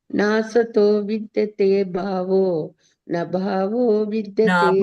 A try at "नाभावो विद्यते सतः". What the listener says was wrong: ಭಾವೋ, ಅಲ್ಲಿ ನಭಾವೋ ಅಲ್ಲ, ನಾಭಾವೋ ವಿದ್ಯತೆ ಸತಃ.